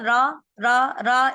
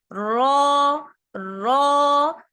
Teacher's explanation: अक्सर बच्चे पढ़ते हैं रा रा रा, इसमें क्या करते हैं बच्चे, सिर्फ जबान की नोक ऊपर लगा रहे होते हैं। ठीक है, तो हमें सिर्फ जबान की नोक नहीं लगानी रॉ पढ़ते वक्त, रॉ रॉ, जबान का आधा हिस्सा भी हमें ऊपर लगाना है